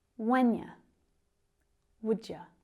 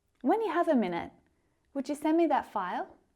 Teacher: those pronouns you and the verb would almost disappear when spoken